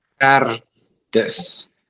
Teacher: epiglottal in the back of your throat